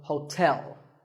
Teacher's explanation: There are 2 syllables, ho and tell, like the English word tell as in tell me. The stress is on the second syllable, so hotel.